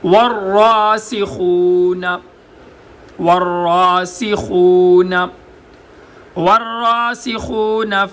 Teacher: وما يعلم تأويله إلا الله والراسخون واو ہونٹ گول، را موٹا، را کے اوپر کھڑا زبر، اس کو ایک الف کی مقدار لمبا، سین سیٹی کی آواز، خا، ہا اور خا کے درمیان فرق کر کے خا کو گلے کے سب سے اوپر والے حصے سے ادا کرنا